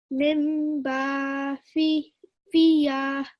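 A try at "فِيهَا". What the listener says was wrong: Not fi, so 2 dots is for qaf.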